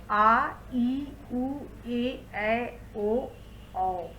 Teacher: ये हो गया दीर्घ स्वर। इसको बोलने में ह्रस्व स्वर की अपेक्षा ठीक दुगुना समय लगता है, क्योंकि वो एक मात्रा लगता है, इसमें 2 मात्रा लगता है, अर्थात कि इसमें ह्रस्व से दुगुना समय लगा।